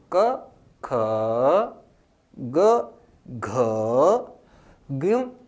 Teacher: दूसरे और चौथे में ज्यादा समय लग रहा है, पहला तीसरा और पांचवा कम समय में बोले जा रहे हैं।